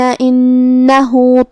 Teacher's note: مد صلہ صغرا ہے، ہم اپنی آواز 2 مد کے برابر لمبی کریں گے